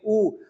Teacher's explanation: अगर आप गोलाई में होठों को ना करें तो शायद उ की ध्वनि ना बने इसलिए होटों के पूरे इस्तेमाल से उ बनता है · और ऊ देखिए, होठों को बना के देखिए, ऊ, अगर आप गोलाई में होठों को ना करें तो शायद ऊ की ध्वनि ना बने